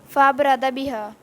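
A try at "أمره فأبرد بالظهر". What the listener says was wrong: نہیں، امرہ پیچھے پڑھے نا، امرہ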